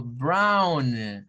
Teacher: el sonido de esa o w es Au Au